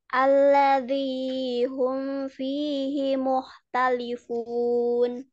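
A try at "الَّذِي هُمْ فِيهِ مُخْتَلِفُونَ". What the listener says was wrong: Ahsanti, Masya Allah.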